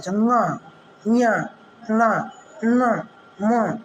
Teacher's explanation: नासिक के व्यंजन होता है, नाक के मार्ग से जब वायु निकलती है